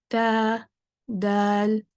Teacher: ता और दाल के लिए ज़ुबान बिल्कुल फ्लैट है, पीछे से उठी हुई नहीं है। तो ता दाल लाइट लेटर्स हैं, ज़ुबान फ्लैट रहेगी।